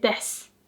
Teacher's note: Like the u is not pronounced much. It's the same with です.